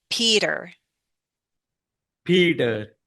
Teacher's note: I'm using what we call a flap T. It sounds like a D.